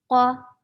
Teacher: qaf is short and heavy